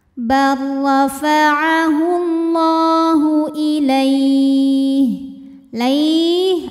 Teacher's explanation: cara membacanya dipanjangkan lamnya dua harakat saja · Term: Mad Thobi'i muqaddar